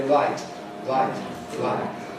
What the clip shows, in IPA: waɪt